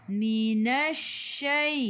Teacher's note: Lam tak ada sukun selepasnya, ada sabdu, terus tekan ke dalam shin. Shin sifat hurufnya tafashi, kena hambur. Minasyai. Minasyai.